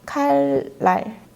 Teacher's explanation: 이 니은이 앞에 리을로 인해서 리을로 발음되는 그런 현상인데요. 이런 건 유음화라고 해요.